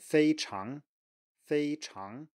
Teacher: tone so nothing weird here it's just a straight combination so it's a high tone plus a rising tone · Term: first tone plus second tone